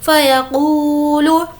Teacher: क़ू को खींचेंगे क्योंकि वाव मद्दा